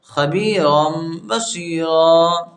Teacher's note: اور جسے تنوین ہے را کے اوپر اور اس کے آگے الف ہے، تو اب ہم جب را کو الف سے بدلیں گے ہم، ٹھیک ہے؟ تو یہاں پر جو تنوین ہے اس تنوین کو نہیں پڑھا جائے گا، صرف ایک زبر پڑھا جائے گا